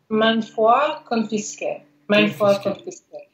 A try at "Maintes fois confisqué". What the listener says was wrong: Il n'y a pas de N. C'est confisqué.